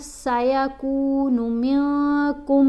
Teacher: کاف کو میم سے ملاتے ہوئے غنہ کرنا ہے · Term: ادغام